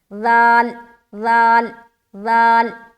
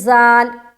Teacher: سیٹی کی آواز نہیں نہ آ رہی